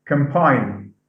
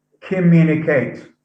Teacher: So we have double M. The N goes to M sound, which is bilabial, because of the following sound.